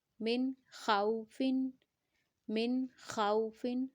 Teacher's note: نون کے ساؤنڈ کو غنہ نہیں کریں گے کیونکہ نون ساکنہ کے بعد ہمارے پاس خا ہے، اور خا کو ہم جلدی سے پڑھیں گے کیونکہ ہمارے پاس لین لیٹر ہے، واو لین ہے.